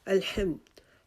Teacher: ہا کی آواز کو ہم نے حلق کے درمیانے حصے سے نکالنا ہے